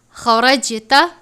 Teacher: خا کو پر پڑھتے ہیں کیونکہ خا حروف مستعلیہ میں سے ہے